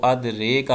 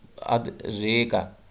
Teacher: را جو ہے وہ یا کی طرف نسبت کریں گے، لیکن وہ مکمل یا نہیں ہوگی، نہ ہی مکمل الف ہوگا۔ تو ان دونوں کے درمیان جو ہے یہ الف جو پڑھا جاتا ہے اسے الف الامالہ کہا جاتا ہے۔